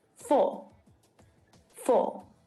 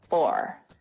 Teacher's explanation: when i pronounce this word i don't pronounce the final er sound and that's my australian accent which is the same as the british pronunciation of this word